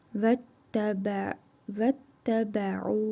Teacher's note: Burada məddi munfasıl qaydasıdır. Ayn hərfini 4 əlif miqdarı uzadırıq.